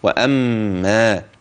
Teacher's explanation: الحروف ترقق والغنة ومحلها في الميم